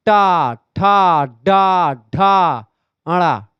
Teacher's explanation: अब टा जाकर के मूर्धा से आपका जीभ टकरा रही है